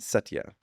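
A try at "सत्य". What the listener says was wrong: It's just it can be softer. if you go Satya, then it's like really emphasizing the first kind of. it can just be softer, like Satya, Satya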